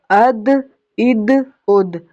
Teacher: The tip of the tongue is touching to the root of your upper teeth.